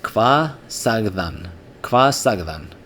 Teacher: the word kvað in everyday speech often gets reduced to kva.